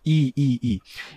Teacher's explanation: Quando você diz i a língua se aproxima do palato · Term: vogal palatal